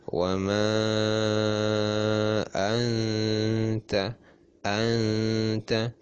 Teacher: Jadi nunnya samar dan dipanjangkan, dilamakan. Anta, bukan anta tapi anta, bukan anta atau anta tapi disamarkan anta, seperti itu ya. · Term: ikhfa hakiki